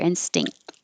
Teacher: The tongue finishes in the T position, but I'm not releasing it unless there's a vowel after it.